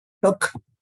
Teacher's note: The L is not pronounced.